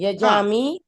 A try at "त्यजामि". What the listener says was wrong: यजामी कुठे? त्यजामी आहे ना. ताई, त्यज धातू आहे ना, त आहे ना, तलवारीतला त आहे ना. त्यजामी